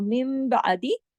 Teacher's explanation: नून की आवाज मीम में तब्दील हो जाती है, इसको कहते हैं इकलाब का कायदा। तो मिम बादी, नून की आवाज गायब हो गई, मीम की आवाज आ गई।